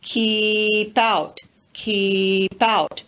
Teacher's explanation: we've taken the consonant p and linked it to the next word out